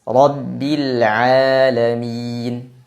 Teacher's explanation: pada saat kita mengucapkan huruf Ain lidah kita datar tidak terangkat maka akan menghasilkan suara yang tipis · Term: istifal